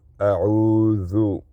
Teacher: Don't put any nasalization in dhal dhamma.